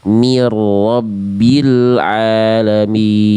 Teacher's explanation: Ro-nya ditasydidkan, ditekan, tapi tetap ada getarannya. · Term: ro bertasydid